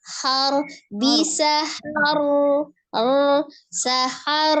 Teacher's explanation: rnya dibaca tebal karena ro sukunnya Sebelumnya dia fathah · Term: rnya tebal